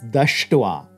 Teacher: And then we add your thwa, the palatal S is going to again jump down to the retroflex, pulling the dental T with it, and it becomes dushtwa, having bitten.